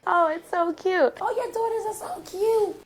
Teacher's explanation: when they want to emphasize something they will use that high pitch high pitch sound to emphasize something